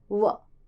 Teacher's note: दंतोष्ठ, जिनका उच्चारण दांत तथा होठों की सहायता से होता है, उन्हें बोलते हैं दंतोष्ठ।